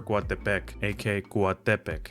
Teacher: the original Nahuatl way stresses the penultimate, aka the second to last vowel